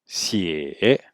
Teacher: Donc je rappelle que le X se prononce comme un S, mais avec le dos de la langue. Donc il faut placer la pointe de la langue derrière les dents du bas et prononcer comme un S avec le dos de la langue.